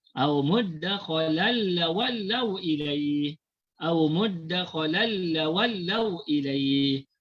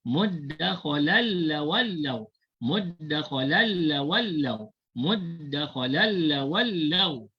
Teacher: Bunyi tanwin tu dimasukkan ke dalam lam, maka bunyi tanwin tu dah hilang. Terus bunyi huruf lam. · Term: idgham bila ghunnah